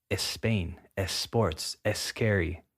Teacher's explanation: adding that e sound before the s